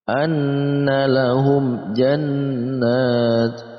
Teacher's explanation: Ketika ada mim mati bertemu dengan semua huruf hijaiyah yang selain mim dan ba, maka masuk dalam kategori izhar syafawi. Maka dibaca jelas, antara mim mati dibaca jelas dan huruf setelahnya pun juga dibaca jelas.